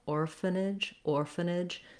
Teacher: Orphanage, we have the same sounds as orphan in the beginning, stress on the or, and then here I did write it with the schwa simply because we have that N sound may be happening here more on this nidge syllable, orphanage, orphanage.